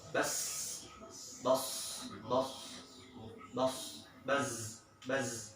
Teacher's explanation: tajamnya suara karena ia keluar dari celah yang sempit antara ujung lidah dengan dua gigi seri atas dan bawah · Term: sofir